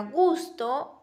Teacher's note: la G es una consonante sonora, lo que significa que durante su articulación las cuerdas vocales deben vibrar. Esto diferencia la G de otras consonantes oclusivas.